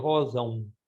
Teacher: Não é o som do nariz que a gente tem no M em português